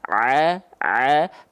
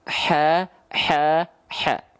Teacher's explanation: kalau Ain enggak pakai nafas a a Kalau ha kecil dikasih hembusan angin ha ha ha paham paham paham nah jika teman-teman tepat melafalkan